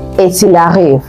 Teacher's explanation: So the T in et, which means and, is not pronounced. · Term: the forbidden one